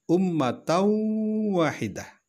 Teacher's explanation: tanwin bertemu dengan wow wow adalah huruf Idgham dan disini dibaca dengung dengan guna maka hukumnya adalah Idgham Bighunnah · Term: idgham bi gunnah